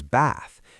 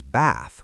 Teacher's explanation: a British person says bath, an American says bath with a flat a. · In Southern British English and in received pronunciation, words like bath, path, dance, chance, can't, laugh, and ask are pronounced with a long ah vowel, like the sound in father. · In American English, these same words are pronounced with a short ah sound, the same vowel as in cat or trap.